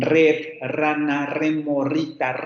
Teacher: el alveolar vibrante múltiple sonoro es nuestra r múltiple